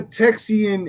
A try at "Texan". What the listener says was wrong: It's not Texoian. It's Texan.